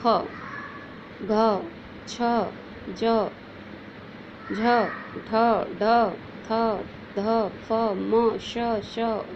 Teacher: इनका उच्चारण करते समय वायु तो निकलती है, इसके अलावा ह शब्द का उच्चारण भी साथ में सुनाई देता है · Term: महाप्राण व्यंजन